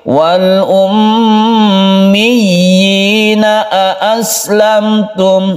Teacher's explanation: Wal ummiyin, mi tasydidkan ya atau kita tekan ke ya-nya dahulu dari mi, kemudian ya-nya itu dibaca panjang satu alif. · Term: mad tamkin